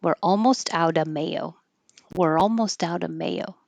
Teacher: when you have of before a consonant, of mayo, you can drop the V sound and just sound like outa.